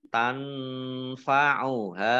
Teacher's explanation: Nun sukun bertemu dengan huruf fa, bacaan ikhfa, dibaca samar-samar.